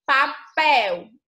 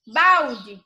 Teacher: a letra l tem som de u quando está no final de sílaba